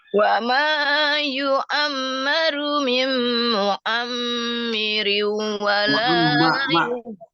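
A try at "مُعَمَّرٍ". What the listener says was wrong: Bukan mi, mu'ammar. Patah. Mu'ammar, bukan mu'ammir.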